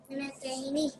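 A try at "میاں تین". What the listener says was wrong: So be mindful. It's a sound, not na. Miya tai ni. Miya tai ni.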